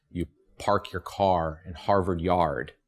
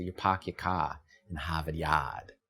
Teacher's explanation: The famous thing that the Boston accent does is it drops the rhotic R that follows a vowel.